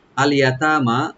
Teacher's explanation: ইয়া open থাকবে, তা open একালিপ টানবেন, মিম ওপেন একালিপ টানবেন।